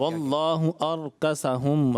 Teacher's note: را ساکن سے پہلے زبر ہو تو را کو پر پڑھا جاتا ہے، آپ نے را کو پر نہیں پڑھا، موٹا نہیں پڑھا.